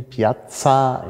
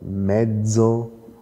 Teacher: Und wenn Sie genau hinhören, dann erkennen Sie, Piazza ist stimmlos. Und Mezzo ist stimmhaft.